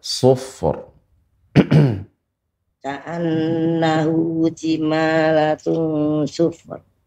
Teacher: kita tidak boleh memantulkan fa karena fa bukan huruf qalqalah